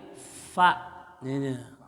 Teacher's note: bibir bawah menyentuh gigi atas mengeluarkan angin. Fa, nah gitu, ya, nggak ada bibirnya.